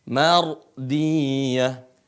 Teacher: di sini dibaca Mar dibaca tebal karena ro sukun sebelumnya adalah fathah